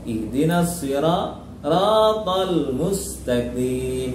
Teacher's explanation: ada ra sirata. Ra-nya mat tabi'i dan tafkhim ya.